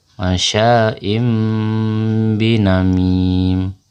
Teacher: ketika bertemu tanwin bertemu dengan huruf ba dibaca dengan dengung dengan merapatkan bibir